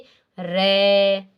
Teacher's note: जिन व्यंजनों के उच्चारण में जिह्वा को 2-3 बार कंपन करना पड़ता है वे प्रकंपित कहलाते हैं। जैसे रे, 2-3 बार इसमें कंपन होता है, मतलब इसके अंदर अचानक से ऐसे कंपन सा शुरू ही रहता है, रे होता है ना, तो उसको क्या बोलते हैं, प्रकंपित, यानी कंपन लगातार चलता ही रहता है।